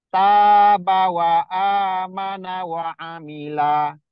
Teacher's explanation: Di ujung nggak ada yang panjangnya, cuma ada dua huruf yang dipanjangkan, ta sama a.